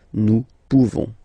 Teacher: You don't pronounce the final S.